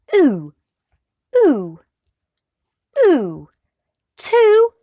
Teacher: the back of the tongue goes up and high the rounded refers to the lips so instead of it being like the smile in other vowels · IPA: /u:/